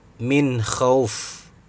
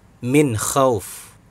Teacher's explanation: Nun mati bertemu dengan kha. Jadi dibaca dengan sangat jelas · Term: idhar